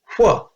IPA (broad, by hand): ʍ